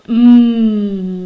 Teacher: put your hand on your throat say mmm does it vibrate it does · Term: voiced